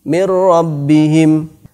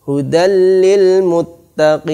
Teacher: Yang benar adalah tanpa gunnah atau tanpa dengung. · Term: idgham bila gunnah